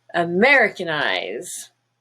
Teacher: in the word americanize you have a little bit of a second stress on eyes and secondary stresses usually have a color as well this one